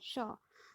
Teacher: इसके उच्चारण के लिए हमारी जो जिह्वा है वो हमारे तालु को टच होती है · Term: तालव्य स